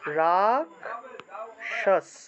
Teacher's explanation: খেয় থাকলে উচ্চারণটা হবে ক যোগ মূর্ধন্য ভেঙে যাবে